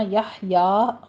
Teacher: بیحیا میں ہا کو وسط حلق سے ادا کرنا ہے، قلقلہ نہیں کرنا، بیحیا نہیں کہنا، یحیا فتح قائمہ ادا کرنا ہے، 2 کاؤنٹ کرنے ہیں